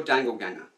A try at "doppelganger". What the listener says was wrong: Doppelganger. It's doppelganger. You said dangleganger.